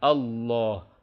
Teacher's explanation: apabila lafaz Allah atau lafdzul jalalah diawali dengan fathah atau dhomah maka dia menjadi tebal